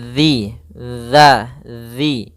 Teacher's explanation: tempat keluarnya adalah ujung lidah kita menempel dengan gigi seri atas, dan dia kalau bisa sedikit tergigit gitu ya, zi. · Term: zal